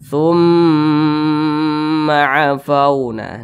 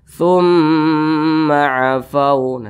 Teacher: Dipanjangkan atau didengungkan kira-kira 2 ketukan sampai dengan 3 ketukan. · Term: gunnah musyaddadah